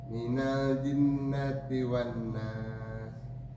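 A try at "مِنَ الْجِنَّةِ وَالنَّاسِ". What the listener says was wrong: Sinnya hamas, berikan hamas yang lebih kencang. Minal jinnati wan nas.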